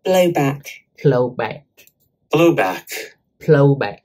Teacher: So it's stressed on the first syllable, and the second one is back, plowback.